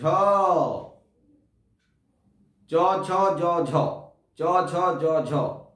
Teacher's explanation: জীবের অগ্রভাগ তালুতে স্পর্শ করবে। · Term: তালব্য ব্যঞ্জন